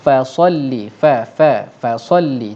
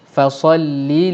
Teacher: Fa ni nipis, sad tebal. Bila bertemu sebelah tebal sebelah nipis, pastikan yang nipis tu bunyi nipis, yang tebal bunyi tebal.